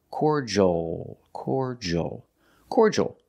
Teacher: uh c c and the last sound is the L but it's the dark L with the tongue in the back of the mouth · English cordal make the or sound like for and or core the D makes a j sound like juice and jump